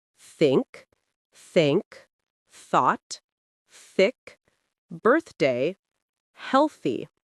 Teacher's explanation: Voiceless TH, th, no vibration.